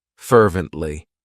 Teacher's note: it has three syllables and the stress is on that first syllable